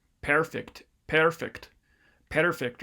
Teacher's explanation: this person transcribed it as voiceless schwa that's not quite right uh it's creaky voice schwa